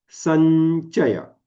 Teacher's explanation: सन थोडा लांब आणि त्याच्यानंतर चय म्हणा